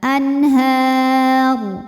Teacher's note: huruf ra ketika berhenti dibaca secara tafkhim sebab rnya disukunkan huruf sebelumnya juga fathah barisnya di atas maka r-nya tebal